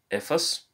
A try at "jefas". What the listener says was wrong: It's not jefas, jefas. You have to say the H sound.